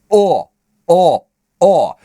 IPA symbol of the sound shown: ɒ